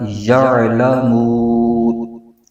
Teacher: وقف کریں گے تو نون کی جو زبر ہے وہ ختم ہو جائے گی، وہ نون ساکن ہو جائے گا ، تو یہ بن جائے گا یعلمون۔ اب اس آیت کو